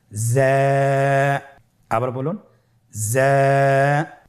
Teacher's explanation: যা হরফটির মাখরাজ আপনারা দেখতে পাচ্ছেন জিহ্বার আগা সামনের নিচের 2 দাঁতের পেট ও আগার সঙ্গে লাগিয়ে উচ্চারিত হয়।